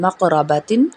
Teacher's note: را زبر را، با زبر با، تا دو زیر تین، مقرباتن، قاف کو موٹا پڑھیں گے اور را کو بھی